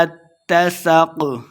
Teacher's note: سین پہ سیٹی کی آواز آئے گی